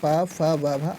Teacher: प वर्ग की तो इसका उच्चारण स्थान ओस्ट से होता है यानी कि दोनों ओठ के स्पर्श होने से होता है